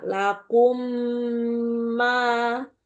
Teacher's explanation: Huwallazi khalaqalakum ma fil ardi jami'a. Lakum ketemu ma, Bu. Ada dengung sempurna.